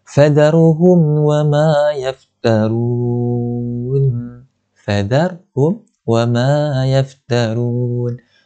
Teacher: Tak perlu dengung, tak perlu panjang. Dijelaskan sahaja bunyi mim tersebut. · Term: izhar syafawi